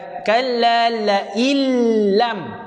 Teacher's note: Kalla la illam, terus masuk ke dalam lam. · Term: idgham bila ghunnah